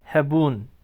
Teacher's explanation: Hebun, E kısa, U uzun.